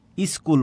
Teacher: স্কুলের আগে যে একটা ই ধ্বনি আসছে প্রথমে একটা স্বরের আগমন ঘটেছে শব্দটা ছিল স্কুল স্কুলের আগে একটা ই ধ্বনি চলে আসছে এজন্য